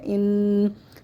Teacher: نون مشدد کو ہم غنّے کے ساتھ پڑھیں گے